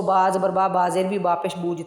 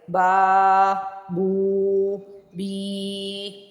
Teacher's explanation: کیونکہ زبر کے بعد الف آئے، پیش کے بعد واؤ آئے، زیر کے ساتھ یا آئے، تو ان تینوں ورڈز کو تھوڑا لمبا کر کے پڑھیں گے 1 سے 2 سیکنڈ کے لیے